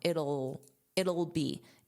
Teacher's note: So very unstressed, just that dark L sound.